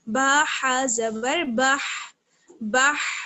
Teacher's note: بڑی ہا ہے تو اس کو ہم حلق کے درمیانی حصے سے ادا کرتے ہیں